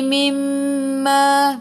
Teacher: Mim ada sabdu wajibul gunnah, kena dengung 2 harakat. Ma 2 harakat, ada alif.